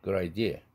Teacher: 아이디어에서 드 사운드가 플랩 되지 않는 것은 아이디어는 뒤에 액센트가 있기 때문에 플랩이 안 되고 있죠